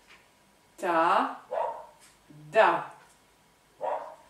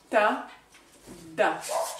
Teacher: la pointe de la langue, et c'est pour cela que ce sont des dentales, vient contre les dents du dessus, à l'arrière, et une partie de la langue, vraiment la pointe, vient entre vos dents.